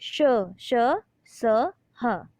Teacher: ऊष्म व्यंजन, ऊष्म व्यंजन कौन से होते हैं, इन व्यंजनों का उच्चारण एक प्रकार की रगड़ या घर्षण से ऊष्म वायु से होता है